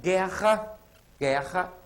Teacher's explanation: porém o u não é pronunciado